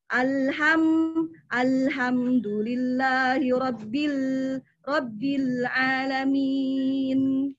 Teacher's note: lam itu harus mengalir sedang, tawasud sifatnya